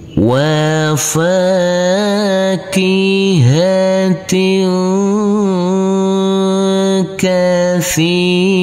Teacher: Di sini ada huruf tak marbutoh yang berkasroh tanwin bertemu dengan huruf kaf, maka tanwinnya ini kita baca dengan samar-samar dan berdengung. Pada waktu berdengung persiapan masuk ke huruf kaf. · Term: bacaan ikhfa